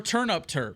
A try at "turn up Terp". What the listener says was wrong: turn up. You got to say it. You got to enunciate it though, because it just sounds like you said turn up Terp, like turnip.